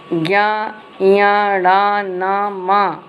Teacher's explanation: ये वर्ण हमारे नासिका से निकलते हैं और इसे नासिक्य कहते हैं